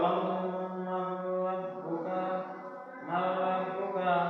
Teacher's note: মিম জবর মান এখানে একটু গুণনা সহ করতে হবে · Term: গুণনা সহ ঈদগাম